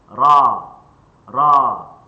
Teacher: Bila ra fathah, maka pangkal lidah kita sedikit terangkat dan ada syibh ada sikit lek pada tengah lidah kita. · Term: tebal